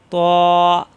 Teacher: জিহ্বার গোড়া উপরের মাটির দাঁতের গোড়ায় লাগিয়ে ত তা হবে না ত জিহ্বার আগা উপরের দুই দাঁতের গোড়ায়